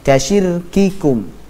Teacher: dari segi aliran suara dia memiliki sifat syiddah kuat, akan tetapi sebaliknya dari aliran nafas dia memiliki sifat hamas, mengalir nafasnya. Nah, akan tetapi yang syiddah ini lebih kuat daripada hamas tersebut.